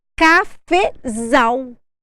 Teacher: o zal é a sílaba tônica o zal é a sílaba mais forte